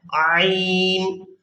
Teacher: عین جو ہے یہ درمیانے حلق سے ادا ہوتا ہے